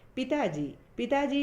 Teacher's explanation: पर बल दिया जा रहा है जोर दिया जा रहा है जब हम पिताजी बोलते हैं तो ता को खींचना पड़ता है ता पर जोर देना पड़ता है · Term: बलाघात